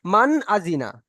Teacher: এই নুন সাকিনের আওয়াজকে নাকের মধ্যে কোনো রকম আটকে রাখা যাবে না, একদম প্রকাশ করে মান আজিনা।